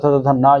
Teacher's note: ता वर्ग जो होता है त थ ध न, ये दंत होती हैं।